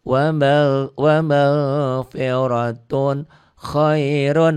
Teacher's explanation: ton dibaca apa adanya karena tanwin ketemu kha idhar.